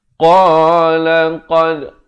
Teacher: Qa makhrajnya itu di pangkal lidah.